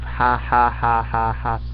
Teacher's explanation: you find nasality in posed laughter, the kind of ha ha ha ha ha sound that you never get.